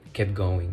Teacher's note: so we don't hear the T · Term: elision